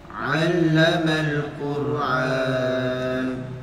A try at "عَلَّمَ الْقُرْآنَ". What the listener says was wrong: Quran bukan Quran. Jangan Quran, bukan ain tapi a. Allamal Quran.